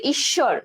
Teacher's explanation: আচ্ছা শব্দের মধ্যে, তাহলে দেখো এখন আমাদের মধ্যে যে ওয়ার্ড তার সাথে আছে বফলা, ঠিক আছে, দ্বিতীয়, তাহলে অনুচ্চারিত থাকে, এবং বফলা যুক্ত ব্যঞ্জন বর্ণটি দ্বিত্ব উচ্চারণ হয়